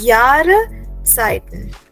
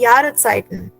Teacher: S is like it's not there when we are pronouncing the word